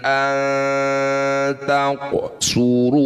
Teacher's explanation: Nun sukun bertemu ta dal atau disebut bacaan namanya ikhfa aqrab. Bunyi nun dengungkan dua harakat.